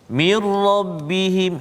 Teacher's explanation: nun mati bertemu dengan ra, mir rabbihim, hilang terus bunyi nun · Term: idgham kamil